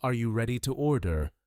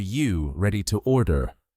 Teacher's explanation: instead of Are you ready to order? it shrinks into You ready to order? That missing R is very common.